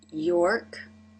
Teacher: the R is at the end of the syllable here so the lips are more relaxed